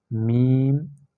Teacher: میم ہونٹوں سے ادا ہوتا ہے، اس کا مخرج ہونٹ ہے